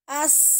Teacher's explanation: Kalau sin itu namanya rohwah, as mengalir.